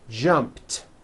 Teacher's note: of course the word is spelled with an ED ending it's just pronounced as a tee